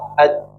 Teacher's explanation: Jadi bagian tengah lidah, ini tengah lidah ya, nempel ke langit-langit atas sehingga tidak ada celah yang keluar, sehingga tidak ada aliran nafas atau nafasnya tertahan. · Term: huruf jim